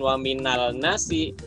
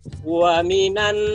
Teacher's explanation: Jadi alif lamnya samar, bersembunyi dia, langsung masuk ke nunnya. Jadi bukan waminal nasi, tapi waminan langsung ke nun. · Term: alif lam syamsiah